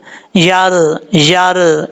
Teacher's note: یا کا مخرج ہے زبان کا درمیان اوپر والے تالو سے لگے تو یا پڑھا جاتا ہے